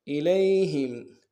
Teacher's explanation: انزل الیہم، الیہم میں لام کو یا کے ساتھ ملانا ہے، یا لین بغیر کھینچے پڑیں گے، ہا کو میم ساکن کے ساتھ ملانا ہے، میم ساکن میں غنہ نہیں ہوگا · خا کے اوپر کھڑا زبر ہے، ایک اعتدال میں کھینچیں گے